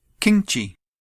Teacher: pronouns which end with the pure nasal sound 'ṃ', the nigāhīta, when the particle 'ci' is added, it changes to a palatal sound. So kiṃ becomes kiñci.